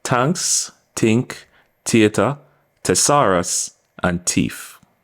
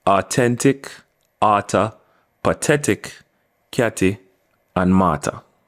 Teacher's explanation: the H is eliminated and what you're left with are just the pronunciation of the hard T